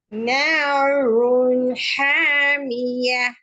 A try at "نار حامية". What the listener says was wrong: நாருன் இன் அன்னது sound வரணுமா? நாருன் ஹாமிய.